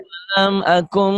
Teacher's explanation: bunyi M bindeng ya. Ditahan.